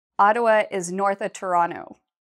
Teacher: change the of to an a sound, an unstressed a sound